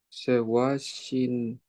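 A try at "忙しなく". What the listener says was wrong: Sewa shinaku. Perfect.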